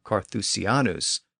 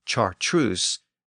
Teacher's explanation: the Latin CA sound became a CH sound in Parisian French